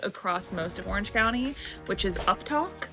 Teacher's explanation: at the end of a phrase, instead of pitching down like most people do, it's pitched up, almost like a question